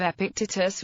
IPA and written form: ˌɛpɪkˈtiːtəs (Epictetus)